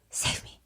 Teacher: it sounds like a very breathy, low, save me. You can barely hear him.